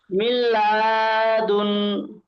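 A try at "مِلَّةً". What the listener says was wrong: মিল্লাদুন নয়, মিম নুন লাম জের মিল্লাম জবর লা, মিল্লা। জবর বা, মিল্লাবা। বা, দুন নয় আমার সোনা ভাই, নিন। নুন দুজের দুন হয়? বলেন, নুন দুজের কি দুন হয়? হ্যাঁ, নুন দুজের নিন, মিল্লাবা নিন।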